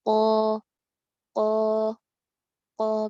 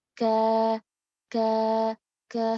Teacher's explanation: Kita bisa dilihat bagaimana suara itu mengalir antara perbedaan huruf isti'la dengan huruf istifal. Huruf qaf nih, suaranya mengalir ke langit-langit. Qa, qa, qa. Berbeda halnya dengan kaf, ka, ka, suaranya melandai ke bawah.